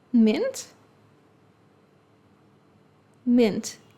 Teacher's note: for southern accents, the vowel sounds i and e are pronounced the same way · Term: pin pen merger